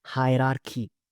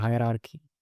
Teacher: ቺቺ የምትለዋን ቃል ብቻ ኪ ማለት ነው